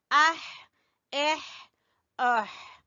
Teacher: गले के दरमियान से आवाज निकालनी है आपने, अह एह ओह। हमजा जबर खा अख, गले के ऊपर वाले हिस्से से।